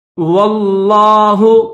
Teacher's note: تو لفظ اللہ کو موٹا کریں گے